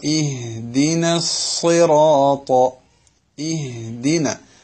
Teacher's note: അറബിയിലെ ഹാഇന് അങ്ങനെ നമ്മൾ ഇംഗ്ലീഷിൽ ഹലോ എന്ന് പറയുന്ന വലിയ മുഴക്കത്തോടുകൂടിയുള്ള സ്വരം ഇല്ല. കിതാബിൽ പറയുന്നത് വളരെ ഖഫിയായ ഒരു അക്ഷരമാണ്. · വളരെ ഖഫിയായ ഒരു അക്ഷരമാണ്. തർഖീഖ് നേർപ്പിച്ചു പറയേണ്ട അക്ഷരമാണ്. ഒരൽപ്പം കാറ്റ് തൊണ്ടയുടെ താഴെ അറ്റത്ത് നടത്തി കഴിഞ്ഞാൽ ഹ എന്നായി.